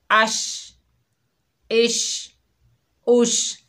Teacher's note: हमज़ा शीन ज़ेर इश, हमज़ा शीन पेश उश। शीन की आवाज़ फैलती हुई महसूस होती है